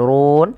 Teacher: rnya dibaca dengan ro tafkhim tebal kemudian dipanjangkan boleh dua harakat boleh empat harakat dan boleh pula nama harakat karena dia ada bacaan Mad Al